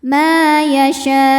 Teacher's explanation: ujungnya pakai naber ya, agak dinaikkan intonasinya. Kemudian di atasnya ada tanda waqaf namanya al-waqfu aula, berhenti lebih utama.